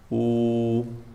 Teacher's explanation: Fa'aliful jawfi wa ukhtaha wa hi hurufu maddin lil hawa'i tantahi. Jawf, rongga dada, itu makhraj huruf mad, itu yang dipanjangkan.